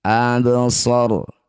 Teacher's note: Ro sukun didahului fathah disebut bacaan ro tafkhim atau ro tebal. Angkat ujung lidah sampai menempel di langit mulut.